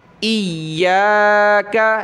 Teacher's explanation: دیکھیں اس کو ایاک نہیں پڑھنا، یہ الف نہیں کھا جانا، اس کو کھینچنا ہے یا کو